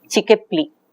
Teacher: there is a reversal of the order of the constituents, order of the phonemes within words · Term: Metathesis